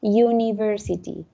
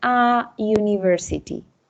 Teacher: la palabra university suena al principio como you, como si fuese una Y, de hecho. Por lo tanto, es como si fuese una consonante, el sonido, ¿cierto?